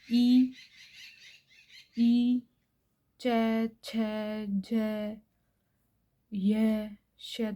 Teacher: हमें फील होगा कि हमारी जो जीभ है वह तालू से टकरा रही है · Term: तालव्य